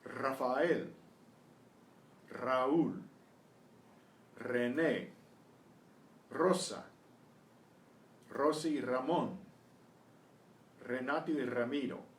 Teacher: The initial R is also trilled.